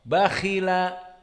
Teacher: tafkhimnya di sini dinamakan tafkhim nisbi karena dia kasrah, tidak begitu kuat, tidak seperti fathah khalaqana kha yang fathah.